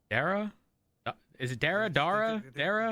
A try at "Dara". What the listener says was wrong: can't get it right. They can't get the middle bit.